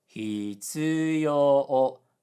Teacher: low high high high. Even though the jump is not as big as hitsuyo and say hitsuyo, it kind of sounds okay, but it also sounds robotic. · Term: pitch accent